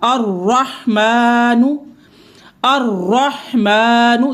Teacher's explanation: जब रॉ मुशद्दद हो यानी कि रॉ के ऊपर तशदीद हो, शद हो और उसके ऊपर ज़बर हो, ऐसी सूरत में भी रॉ को पुर पढ़ा जाएगा यानी मुफ़ख़्ख़म पढ़ा जाएगा।